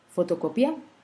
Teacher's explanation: Par exemple, photocopia, la syllabe tonique c'est co. Donc, pia ne nous intéresse pas du tout.